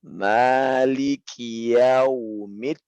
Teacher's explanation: Di sini ada hamas pada kaf.